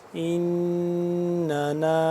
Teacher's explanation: نون یہاں پہ مشدد ہے تو یہاں پہ ہم کریں گے غنہ کریں گے